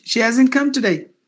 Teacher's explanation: the H is gone because you have to mute it